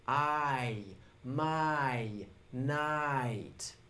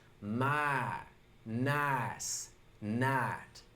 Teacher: So in standard English, there's what we call a diphthong in words like my, nice, and night. Can you hear how that I sound is actually 2 sounds pushed together?